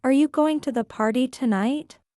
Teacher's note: rising inonation on tonight.